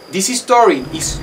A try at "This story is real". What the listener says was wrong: real. It sounds like this is story, but it should be this story. This story. This story is real.